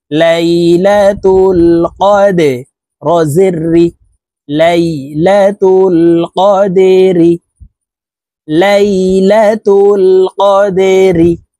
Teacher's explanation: দাল কলকলার হরফ নিচের দিকে ধাবিত করে ধাক্কা দিয়ে উচ্চারণ করতে হবে